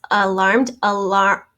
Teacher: the first syllable has a schwa there's the r sound and then we just added the ed to the m because